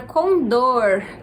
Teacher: Essa é a pronúncia com dor então a sílaba mais forte é dor